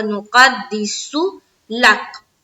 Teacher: قاف کو جب دال سے ملائیں گے تو قلقلہ ہوگا